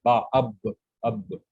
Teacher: با جو ہے یہ اس کو کہتے ہیں حروف شفتین، یہ ہونٹوں کے ملنے سے ادا ہوتا ہے. با اب اب، تو یہ حروف شفوی ہے.